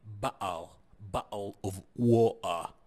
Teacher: التاء ساوند يقوم بنطقه بأه ساوند، مثل بقل، بقل اوف ووتر.